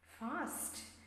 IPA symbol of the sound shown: æ